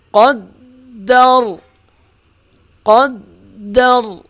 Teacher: وقف کی صورت میں را موٹی پڑھیں گے